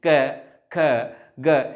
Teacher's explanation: लेकिन इनके उच्चारण में कहीं ना कहीं घर्षण होता है। इन वर्णों के उच्चारण में मुख से निकलने वाली वायु में घर्षण होता है तथा आंतरिक व बाह्य बल लगता है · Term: व्यंजनों